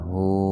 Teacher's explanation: Huruf ha didahului huruf hidup, jadi hu-nya dibaca panjang dua ketukan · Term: mad silah qasira